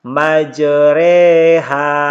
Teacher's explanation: Cara membacanya itu fathah yang dimiringkan ke kasrah dan alif yang dimiringkan ke ya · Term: imalah